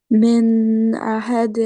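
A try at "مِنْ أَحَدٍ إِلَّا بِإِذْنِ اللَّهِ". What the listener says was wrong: मिन नहीं कहना ना, नून का इजहार करना है। पीछे अभी बताया मैंने आपको ना, आगे हमजा आ रहा है हरूफे हल्की में से, तो नून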